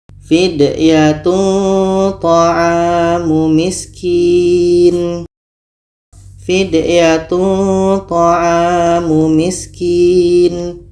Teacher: Dalam tanwin ada bunyi nun, maka di sini ada makhraj nun. Tanwin ini bertemu to. Jadi to ini dekat dengan makhraj nun tadi. Dekat dengan tempat keluar huruf nun. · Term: ikhfa aqrab